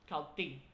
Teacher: So it's a very short ejective T sound.